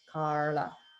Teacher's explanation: many people in south india do pronounce that word with that particular l sound the retro flex l